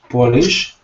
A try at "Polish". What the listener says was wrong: But the stress is on the first syllable. Polish, not Polish. Because if you say Polish, people will think you're trying to say polish, like I polished my shoes. because Polish has a second syllable stress. Polish has a first syllable stress. Pol, first, lish.